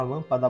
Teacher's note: escrever aqui E por que a palavra lâmpada vai ser proparoxítona porque a antepenúltima sílaba da palavra lâmpada é a sílaba mais forte